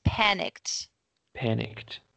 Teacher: the first syllable is the strongest and we don't say the E